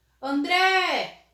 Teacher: André, qual é a sílaba mais forte? O dré. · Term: sílaba tônica